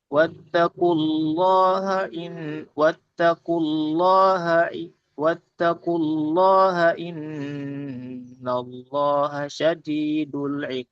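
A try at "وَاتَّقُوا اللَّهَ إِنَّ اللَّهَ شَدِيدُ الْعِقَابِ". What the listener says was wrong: Ee yang pertama diperhatikan lagi panjang pendeknya ya. Panjang pendeknya ee mad jaiz dan mad wajibnya.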